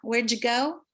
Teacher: a DY sounds like a j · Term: assimilations of D and Y